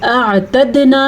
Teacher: اور اعتدنا میں دال کے اوپر قلقلہ ہے اور نون زبر الف نا، الف مدہ ضرور ادا کرنا ہے.